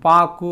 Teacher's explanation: அரை மாத்திரையில் தான் அந்த கூ அப்படிங்கிற எழுத்து ஒலிக்குது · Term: குற்றிய லுகரம்